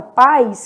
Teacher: que não separa é um ditongo né o a é vogal e o i é semivogal